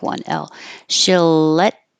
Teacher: because you have two L's together you just make one L